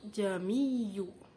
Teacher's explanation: ada bacaan tashil, yaitu jamiyu, menyamarkan hamzah